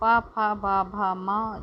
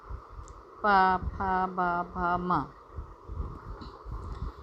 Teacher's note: प, फ, ब, भ, म जब बोलेंगे तो आपके दोनों ओठ मिलते हैं